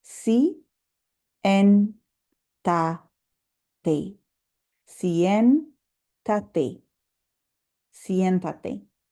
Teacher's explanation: Notice the accent over the E means I'm going to really emphasize that syllable, siéntate. That's the strongest syllable when I pronounce it.